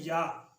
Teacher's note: اس کے بعد ہے یا یعنی وسط زبان اور بالمقابل اوپر کا تالو. یا ادا ہوتی ہے وسط زبان اور اس کے مقابل اوپر کا تالو